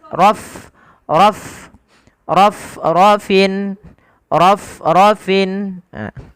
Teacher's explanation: nafas mengalir ya ketika melafalkan Fa harus alir